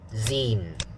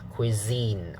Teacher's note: that the next syllable is stressed so uh it is cuisine the second syllable is stronger